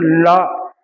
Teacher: நாவின் மேல் அன்னத்தின் நடுப்பகுதியை தொடுவதால் பிறக்கிறது